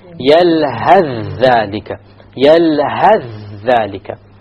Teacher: You will drop the tha and move on directly.